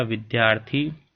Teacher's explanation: विद्या plus अर्थी में विद्या का आ, अर्थी का अ, दोनों मिलकर के आ स्वर का निर्माण करेंगे तो बनेगा विद्यार्थी। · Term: दीर्घ स्वर आ